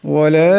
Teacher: ওয়ালা এখানে লামের উপর মদ আসছে, এটাকে অবশ্যই লম্বা করিয়া পড়বেন।